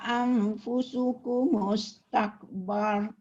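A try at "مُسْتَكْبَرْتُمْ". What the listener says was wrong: Bukan bar saja, tum. tum. Ada tak kalimah istakbartum tu satu kalimah, dia tak boleh tinggal tum. Anfusukum mustakbartum.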